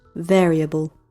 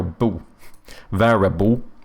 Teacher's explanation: I don't actually pronounce the L in this when it ends with an L